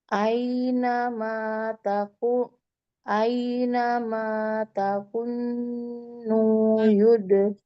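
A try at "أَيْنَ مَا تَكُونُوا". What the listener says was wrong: Tapi taku punya panjang. Nu nu Jangan ragu-ragu, kaf yang pertama memang masuk ke dalam langsung ke dalam kaf yang kedua.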